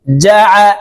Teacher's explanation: আইনকে হলকের মধ্যখান থেকে চাপ দিয়ে উচ্চারণ করতে হবে